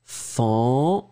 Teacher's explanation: vraiment une nasale, tout dans le nez, pas de N